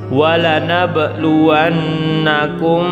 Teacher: cara membacanya harus disuarakan samar-samar di bibir kemudian dengan didengungkan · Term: Ikhfa Syafawi, ikhfa syafawi